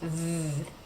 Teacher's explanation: Second, you want to make sure that it's a continuant sound, that you can make this sound for a long time if you want to. Because the V sound in English is what we call a continuant. It's a sound that continues.